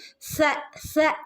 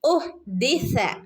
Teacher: സ എന്ന് ഉച്ചരിക്കുമ്പോൾ നമ്മൾ പഠിച്ചതാണ്. നമ്മുടെ പല്ലിൻ്റെ ഇടയിലൂടെ കാറ്റ്, പല്ലിൻ്റെയും നാവിൻ്റെ ഇടയിലൂടെ കാറ്റ് പുറത്തേക്ക് പോകുന്ന രൂപത്തിൽ വേണം സ സ ഉച്ചരിക്കാനായിട്ട്